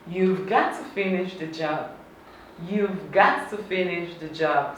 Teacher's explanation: So you're shortening the word have. You're not pronouncing the H and the A.